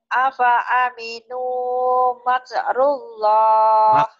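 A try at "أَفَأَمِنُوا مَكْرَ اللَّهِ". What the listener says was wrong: Makro, makrullah. Bukan makrullah, makro, makrullah. Afa aminu makrullah. Hanya pendek. Yang jurnal yang panjang tadi suruh panjang malah pendek. Yang suruh pendek malah panjang. Iya, ketuker.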